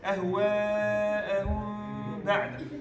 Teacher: You need to make some gunna here. Because meme ساكن, followed by ba. So the hukm here is hiding, ikhfa.